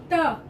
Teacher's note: त बोलने के लिए हमें दांतों के पीछे वाले भाग पर जीभ रखनी पड़ती है यानी दांत के पीछे वाले भाग को जीभ स्पर्श करती है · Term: त वर्ग